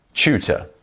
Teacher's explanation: the T and the U is pronounced like a CHU. Chew.